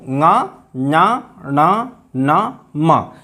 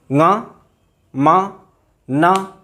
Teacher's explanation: नाक से आवाज़ आ रही है, तो मुख और नासिका दोनों की सहायता से बोले जाते हैं, ये अनुनासिक कहलाते हैं।